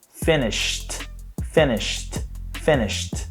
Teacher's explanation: Não tem vibração, logo o passado é finished